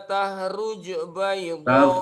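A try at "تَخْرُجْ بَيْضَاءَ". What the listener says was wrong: Tahruj, kha-nya belum jelas.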